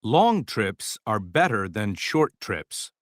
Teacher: We have here the words long, better, and short. So these words, they stand out. They are stressed, okay? Now let's find the other ones.